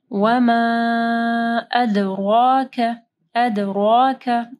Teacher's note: وما کے اوپر مد ہے، اس کے بعد حمزہ ہے، اس کو 4 سے 5 حرکات کے برابر لمبا کرنا ہے